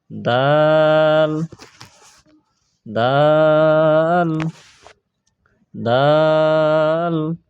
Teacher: জিহ্বার আগা সামনের উপরের দুই দাঁতের গোড়ার সঙ্গে লাগাইয়া